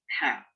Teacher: Tipiskan ha, jangan ho.